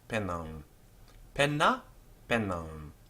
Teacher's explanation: the M isn't a consonant, it's simply a sign that the final vowel is nasalized